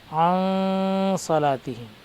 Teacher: حروف اخفا 15 ہیں، اور اخفا کے معنی آتے ہیں آواز کو ناک میں چھپا کر پڑھنا، یعنی یہ نون جو آیا ہے عن صلاتہم کہیں گے تو نون ظاہر ہو جائے گا، بلکہ ہم اس کو نون کی آواز کو چھپائیں گے۔ عن صلاتہم، عن یعنی نون کی آواز صاف طور پر ظاہر نہیں ہوگی بلکہ چھپ جائے گی۔ جیسے اردو میں اخفا کی مثال آسانی سے سمجھانے کے خاطر پنکھا جیسا کہتے ہیں، حالانکہ لکھتے ہیں پنکھا لیکن پڑھتے ہیں نون کو چھپا کر۔